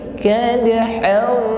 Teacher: ada fathah tanwin han, ini kita samarkan pada huruf fa, yakni di sini ada hukum ikhfa ya. Bukan kadahan, tetapi kadahau.